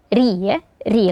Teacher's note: suara ya setelahnya ada huruf ro yang berharakat kasrah yang mana RO ini ketika berharakat kasrah maka dibaca tipis